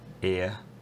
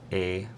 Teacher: tends to be a centering diphthong ear, and it tends to be a monophthong E for Lisa McGee